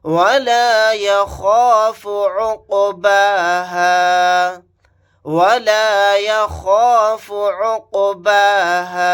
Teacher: قاف ساکن ہے، یہاں پر قلقلہ کر کے پڑھیں گے